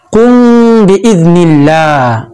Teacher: মিম সাকিনের পরে বা আসিলে সেই মিম সাকিনকে গুণনা করিয়া ঠোঁট মিলাইয়া সামান্য মিলাইয়া নাকের ভিতর লুকাইয়া গুণনা করিয়া পড়িতে হয় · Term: ইখফায়ে শাফাবি